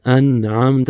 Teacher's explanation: نون پوری پڑھنی ہے، اس میں کوئی جو ہے نا غنہ نہیں کرنا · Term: اظہار